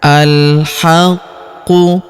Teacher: Alhaqqu huruf qu berharakat tasydid. Maka kita tahan dan kita tekan